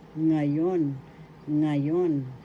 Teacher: nga example ngayon ngayon english now first syllable second syllable yon the accent is in the second syllable